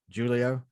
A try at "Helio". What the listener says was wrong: The H is silent.